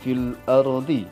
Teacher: alif lam bertemu dengan salah satu dari huruf qamariyah yang 14, yang dibacanya alif lamnya dibaca jelas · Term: alif lam qamariyah